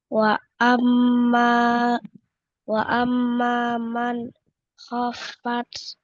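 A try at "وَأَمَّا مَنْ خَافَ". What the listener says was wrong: Oke, jangan lupa gunahnya.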